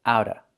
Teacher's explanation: The T is a fast D and you don't hear the VV sound.